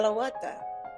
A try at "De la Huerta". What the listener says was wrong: The H is silent in Spanish, but you got everything else. You got all the vowel sounds perfectly perfect.